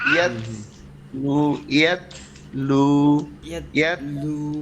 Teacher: রসুলুম মিনাল্লাহি ইয়াতলু ইয়াত يت ইয়াত يتلو ইয়াত কলকলার যদি মতো তুমি হ্যাঁ যে- যায় মনে হয় না, যদি তুমি শক্ত করো তাহলে ত হয়ে যাবে, ইয়াত কিন্তু এটা হচ্ছে তা। যখন ধরবে ইয়াত একটু ওই যে পাঞ্চার হবে, বুঝছো, একটু বাতাস বের হয়ে যাবে।